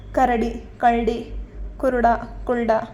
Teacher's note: ಕೆಲವು ಕಡೆ ರಕಾರಕ್ಕೆ ಬದಲು ಳಕಾರದ ಬಳಕೆ ಸಾಮಾನ್ಯ